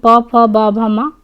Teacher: पा वर्ग प फ ब भ म का उच्चारण ओष्ठ से होता है।